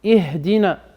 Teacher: Ça frotte pas dans la gorge, il y a beaucoup d'air qui sort. Ihdina. Il y a beaucoup d'air qui sort et ça frotte pas. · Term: ha